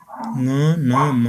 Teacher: त्यसैगरी नासिक्य फोक्सोबाट आएको सास नाके ओडारबाट बाहिर निस्कँदा उच्चारण हुने वर्णहरू ङ न म हुन्